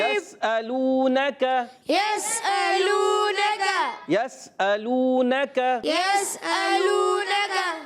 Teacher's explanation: یا کو سین سے ملانا ہے، سین کو ہلانا نہیں، سیٹی سے ادا کرنا ہے. حروف اصلیہ میں سے، حروف صفیریہ میں سے تو سین جو ہے سیٹی والے حروف ہیں، یاد رکھنا ہے. · اور حمزہ خوب واضح کر کے ادا کریں گے، تحقیق سے ادا کریں گے